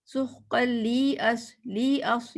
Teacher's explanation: اس کو آپ نے صرف لی کہنا، لی لمبا نہیں کرنا